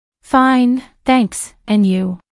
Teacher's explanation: Notice the rising intonation on and you?